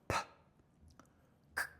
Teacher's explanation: 무성음은 그러니까 입모양만 만들고서 소리만 공기만 뱉는 거야.